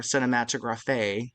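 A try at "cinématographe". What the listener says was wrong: the accent's on the middle e actually, not the end. It is pronounced cinematograph.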